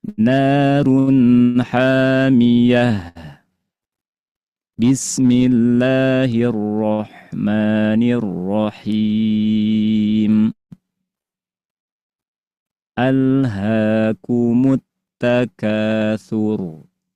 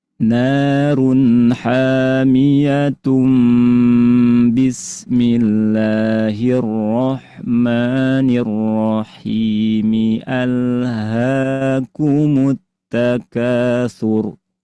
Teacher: akhir surat Al-Qari'ah dibaca dengan cara diwasol, disambung dengan basmalah dan awal surat berikutnya yaitu surat At-Takatsur dalam satu napas